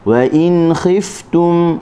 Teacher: wa in jelaskan huruf nun dan kita ambil huruf kha. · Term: izhar